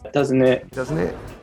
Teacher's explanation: Some more wonderful fluency strategies happening, like dropping final T's